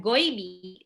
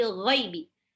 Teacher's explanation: Ghaib agak ngorok. Ghaibi. Bukan goibi, tapi ghaibi.